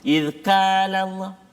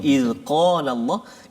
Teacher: Jadi qaf ni tuan-tuan dan puan-puan sahabat-sahabat Al-Quran semuanya, dia terletak di, kalau lidah kita, ni lidah kita kan, kaf di depan, qaf belakang dia. Qaf ni dia dekat dengan anak tekak.